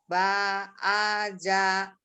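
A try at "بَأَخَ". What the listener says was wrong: Titiknya di atas.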